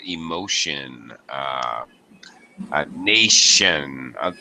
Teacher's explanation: There's lots and lots of words with Tion, and that T is always pronounced like SH